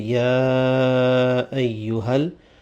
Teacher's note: The ya will be pulled, extended